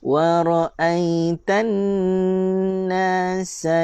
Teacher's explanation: nun bersabdu dengung dua harakat